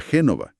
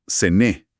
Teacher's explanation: En el dialecto de esa región, el ligur, la ciudad no se pronuncia Génova, como en el italiano estándar, sino Sené, con una c vibrante, casi como una sh